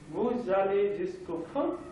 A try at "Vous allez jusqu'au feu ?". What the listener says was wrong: Donc ici, le E tend légèrement vers O. Nous allons faire tendre légèrement vers E.